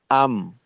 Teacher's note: আম মিমে দুই ঠোটে আটকাইলাম